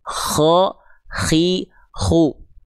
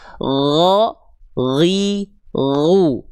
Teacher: Kalau huruf koho adalah huruf gin dengan versi bocornya. Bocor apa? Bocor nafasnya.